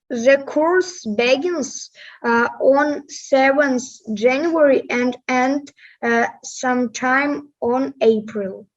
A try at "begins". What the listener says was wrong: And the stress syllable is the second one. The course begins, not begins.